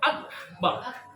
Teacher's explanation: Karena kalau dimatikan, contoh Allahu Akbar. Akbar ada nafas keluar. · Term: kaf